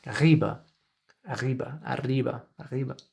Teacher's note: Then there's the peculiar way that the R, the R sounds a little bit French